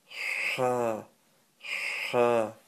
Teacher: It's a sharp burst of air from the middle of your throat.